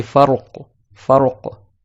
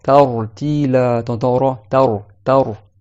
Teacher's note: Quand il a une soukoun, le ra, mais il est précédé d'une fatha, également il est emphatique.